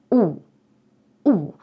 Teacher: складаємо рота трубочкою наче кажемо о але насправді вимовляємо у · Уявіть що ви здивувалися і ви такі у у да оце виходить щось середнє між о та у акцент все одно йде більше на літеру о ніж на у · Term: літера о